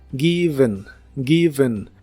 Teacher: La E de esta palabra es un sonido vocal suave de relleno llamado schwa en inglés. Es como una E suave.